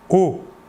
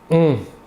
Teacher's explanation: L'air sortira entièrement par la bouche. Alors que pour le ON, l'air sortira par le nez.